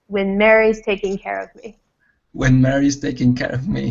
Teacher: I want you to not so much on when but more stress on the first part of Mary's